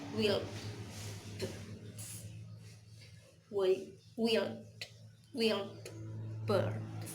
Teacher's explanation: The d sounds in wild becomes b sounds.